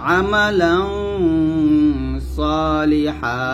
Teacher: আমালাং বলতে হবে গুণ মোটা